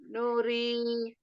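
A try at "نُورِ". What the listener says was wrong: Jangan no, tapi nu. Iya, jadi ketika bomah monyongnya sempurna ya, bukan monyong, maksudnya bibirnya itu maju ke depan gitu. Iya, posisi bibir maju ke depan gitu ya.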